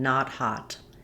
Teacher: This is an open back unrounded vowel. We typically spell vowel ah with letter O in English, which is where some of the accent error patterns come from. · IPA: /ɑ/